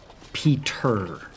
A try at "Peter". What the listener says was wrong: Ah, close. It's a little softer. Peter.